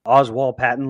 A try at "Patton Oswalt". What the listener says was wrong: Patton Oswald. You said it back. Oswald Patton.